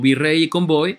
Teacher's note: la y suena como vocal entonces se pronuncia como vocal pero no se acentúa